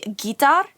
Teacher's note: it's actually Gita with like the emphasis on the first syllable